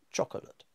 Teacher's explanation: the first syllable is stressed so much that the short syllable coming after it disappears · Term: unstressed syllables